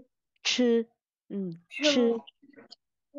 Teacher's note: Sẽ khó hơn một tí là mình phải bật hơi, mình vừa phải uốn lưỡi, mình vừa phải bật hơi.